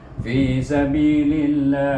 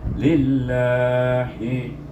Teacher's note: Oh, saya lupa pesan, iaitu apabila kita menyambungnya dengan nama Allah, yang bunyi lah itu lam jalalah itu nak dibaca dua harakah